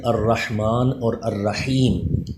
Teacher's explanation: حا کا مخرج الرحمن اور الرحیم، اس میں یہ خیال رکھیے کہ اس میں سانس کی آواز مکس ہو۔ اسی طرح الرحمن اور الرحیم، اس کی را پہ زبر ہے، اور ہم یہ پڑھ چکے ہیں پچھلے سبق میں کہ را کے اوپر زبر ہو تو اس کو بھی پر پڑھا جاتا ہے، تو ان دونوں را کو پر پڑھنا ہے۔